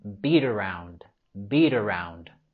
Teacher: Podemos vincular las palabras beat around con la R suave